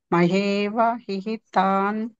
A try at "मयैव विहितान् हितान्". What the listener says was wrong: హితాన్ హితాన్ కంటే ముందు వి ఒకటి వస్తుంది ప్రాక్టీస్ చేయండి సతయా శ్రద్ధయా युक्तः तस्याराधनमीहते लभते च ततः कामान् मयैव विहितान् हितान् मयैव विहितान् हितान् नेक्स्ट अन्तवत्फुफलं तेषां तद्भवत्यल्पमेधसां देवान् देवयजो यान्ति मद्भक्ता यान्ति मामपि अन्तवत् అంతవత్ హు ఫలం తేషాం అంతవత్తు ఉంది కదా విడదీస్తే అంతవత్ ప్లస్ టూ